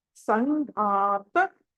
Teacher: మహాప్రాణం ఒత్తి పలకాలి సంఘాత అని పలకాలి